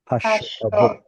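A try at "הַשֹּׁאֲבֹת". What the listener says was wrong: So there is a little sound right here with the aleph and that reduced vowel, hashoavot.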